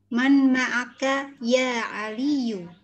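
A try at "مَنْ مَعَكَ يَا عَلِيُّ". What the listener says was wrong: Oke.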